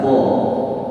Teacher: Huruf qa itu keluar daripada ujung lidah kita, tarful lisan ma'a usulil thanayil ulya. Bersentuhan dengan pangkal gigi seri atas kita